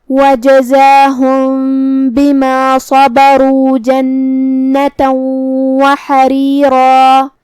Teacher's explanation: کلمت حریرا میں ہا کو ہم حلق کے درمیان والے حصے سے پڑھیں گے